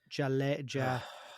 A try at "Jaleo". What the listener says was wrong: Haleo. Haleo. It's a H H sound. Haleo.